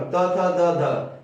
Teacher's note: तो यहाँ है क्या, जीभ जो है वो आपको दांत में आके टच होता है। जीभ जो है आपको दांत में आके टच होता है, तो इससे उच्चारण होता है। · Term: त वर्ग